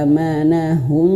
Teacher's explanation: mimnya dia berwarna kelabu, artinya dia tidak dibaca, dan hum masuk ke huruf mim yang di depan